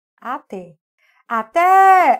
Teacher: a sílaba tônica é a última nós temos uma oxítona terminada em e